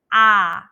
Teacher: with the a sound, our mouth is wide open and the tongue is flat